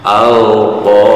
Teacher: Ini ada ro harokat kasroh, hukum bacanya tarkik, jadi tipis ya, tarkik tipis. · Nah ini tak marbutoh apabila disukunkan berubah menjadi huruf H ya, H besar.